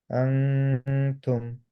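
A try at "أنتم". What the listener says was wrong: আরেকটু গ্যাপ রাখতে হবে ভাইয়া, সরি। টাংটা আরেকটু সামনের দিকে। অ্যা টাঙের টিপটা তায়ের মাখরাজের দিকে।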